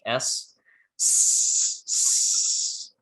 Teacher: if you produce that you'll feel that there is no vibration in your throat and that's how you can tell that the sound is voiceless